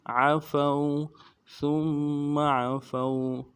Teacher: فا کو واو کے ساتھ ملانا، واو لین ہے بغیر کھینچے پڑیں گے